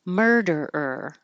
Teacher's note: you're curling your tongue back for the r sound